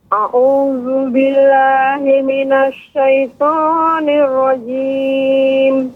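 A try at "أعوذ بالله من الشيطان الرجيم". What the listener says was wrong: Ya, Ibu, untuk pengucapan billah ini ada sedikit juga ditekan Ibu. Billah, a'udzu billah. Tidak billah kurang. Billah.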